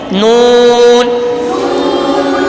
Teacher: نون زبان کا کنارہ اور دانتوں کی جڑ سے ادا ہوتا ہے